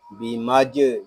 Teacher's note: یہاں جیم ساکن ہے، اس میں قلقلہ خوب ظاہر کریں گے